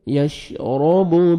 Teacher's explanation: را کو مرزبر ہے را کو موٹا کر کے پڑھیں گے. یشرب بہل ہا پڑھیں گے بہل ہا کو اپنے صحیح مخرج سے ادا کرنا ہے تاکہ ہا میں ساؤنڈ مکس نہ ہو.